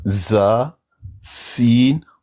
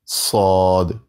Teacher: تو صاد کو پڑھتے وقت تھوڑا مفخم پڑھتے ہیں، زا اور سین کو فلیٹ پڑھا جاتا ہے، صاد کو مفخم پڑھا جاتا ہے